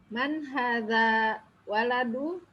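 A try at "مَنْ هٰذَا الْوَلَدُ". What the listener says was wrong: Aywa, man hadzal, jangan lupa ada alif lam di situ.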